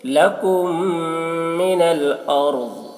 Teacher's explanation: میم ساکن کے بعد جب میم ہو تو میم کو میم سے ملا کر غنہ کے ساتھ پڑھتے ہیں. اس کو ادغام شفوی کہتے ہیں، اس کو ادغام شفوی کہتے ہیں.